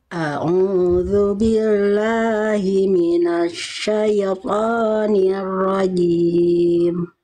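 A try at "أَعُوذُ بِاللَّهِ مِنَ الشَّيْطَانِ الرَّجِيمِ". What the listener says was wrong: Syai-nya jelaskan bunyi i-nya, ya sukunnya. Syai, jangan sampai syaitoni.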